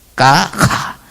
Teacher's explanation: That ka, from ka to kha, progress from ka to kha, you only add an aspiration like ha, ha, ka, kha.